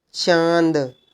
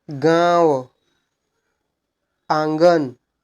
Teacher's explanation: बोल के देखिए नाक और मुंह दोनों से भनभनाहट आएगी।